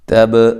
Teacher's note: تا کو باریک پڑھنا ہے، با پہ قلقلہ کرنا ہے